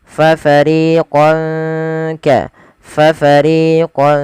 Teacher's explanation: Cara membacanya samarkan tanwinnya kepada huruf kaf. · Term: ikhfa